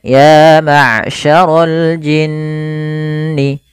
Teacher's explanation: Maka teman-teman apabila ada kita dapati dalam bacaan Al-Qur'an ada nun tasydid plus atau bukan plus tapi mim tasydid atau mim tasydid dalam bacaan Al-Qur'an ini kita hukumi dengan hukum bacanya satu, yaitu gunnah. Kita menahan dulu suara n ya atau suara m-nya sepanjang 2 harakat.